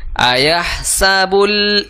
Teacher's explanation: dibunyikan samarnya di mulut, kemudian digunahkan berbarengan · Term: ikhfa pertengahan